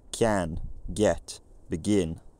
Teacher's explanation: a little y appears between the consonant and the vowel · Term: palatalized